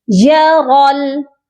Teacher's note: را موٹا کر کے پڑھا جائے گا اور اس کو لام کے ساتھ ملائیں گے، درمیان میں خالی الف ہے اس کو ہم چھوڑ دیں گے۔